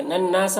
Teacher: یہاں پر نون مشدد غنہ ہوگا اور الف مدہ ہے تو یہاں پر ایک الف کے برابر کھینچیں گے.